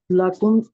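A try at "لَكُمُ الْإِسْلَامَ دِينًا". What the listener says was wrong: لَكُمُ الاسلام دین آپ کریں گے نا، لَكُم نہیں، لَكُمُل، مل رہی ہے آگے جا کے. تو کم ہی، لیکن ملانے کے لیے آگے پیش ڈالی گئی ہے اس کے اوپر ٹیمپریری.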